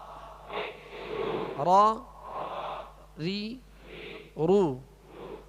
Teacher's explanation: اس میں اس کی ادائیگی میں آواز میں کپ کپاہٹ ہوگی، جسے راشا کہتے ہیں. کپ کپاہٹ ہوگی وہ اس وجہ سے کہ اس کی خوبی ہے کہ اس میں تکرار کی مشابہت ہو، مکمل تکرار نہ ہو کہ را ہو جائے.